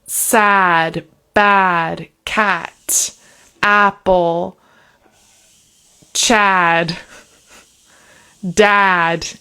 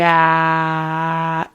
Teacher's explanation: It's like the vowel sound in the front of the mouth at the bottom.